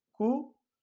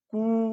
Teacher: इनके उच्चारण में श्वास के प्रयोग का अंतर है। छोटे ऊ के स्वर के उच्चारण में कम श्वास का प्रयोग किया जाता है और बड़े ऊ में अधिक श्वास का प्रयोग किया जाता है।